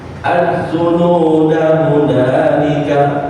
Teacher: Kalau kita lanjutin ke kalimat setelahnya hunalika, maka az-zununa ini dibaca pendek.